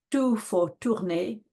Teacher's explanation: tout for tourner is, you know, missing rather a lot. It's missing the nasalization, it's missing the R, you know, so it's hard to know.